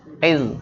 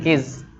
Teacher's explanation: Nah, suara koknya, makhrajnya ada di pangkal pangkal lidah